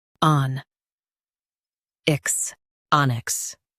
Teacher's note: Emphasize on and keep ix light.